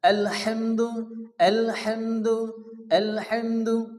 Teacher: প্রথমত এখানে লেখা আছে, এই যে আয়াতটা আছে আলহামদুলিল্লাহি রব্বিল আলামিন, এখানে শুরুতে আল হা, এই যে এখানে বড় হা আছে, অর্থাৎ অনেকে আছে হা পড়ে, হা পড়া যাবে না, পড়তে হবে কি বড় হা, মুখ দিয়ে বাতাস বাইর হবে